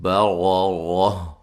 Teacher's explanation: را کو موٹا ادا کریں گے، اس را کو بھی، دونوں راؤں کو موٹا ادا کریں گے ، را کے اوپر زبر ہے،